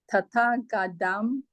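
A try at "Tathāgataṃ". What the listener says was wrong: How do you pronounce this letter? It's T, not D. Tathagatam.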